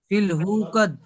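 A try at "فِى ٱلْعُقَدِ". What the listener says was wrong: উকাদ, উকাদ, হু নয় আইন, ফিল উকাদ। অক্ষরের দিকে লক্ষ্য করেন, অক্ষরটা দেখে পড়েন, ফিল উকাদ। ও আইন, আইন ফিল উকাদ, আইন পেশ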